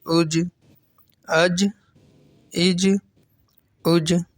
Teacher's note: جیم میں بھی قلقلہ ہوگا، آواز لوٹتی ہوئی نکلے گی